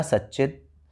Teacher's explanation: ये जो आपको ची में ई की मात्रा नजर आ रही है, तो ये बेशक मात्रा आगे से आ रही है, लेकिन व्यंजन की दृष्टि से बोलकर आपको पता चल जाएगा कि सामने च है। तो च होने के कारण त को भी च हो गया और बन गया सच्चित